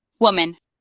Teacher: putting the emphasis at the beginning of the word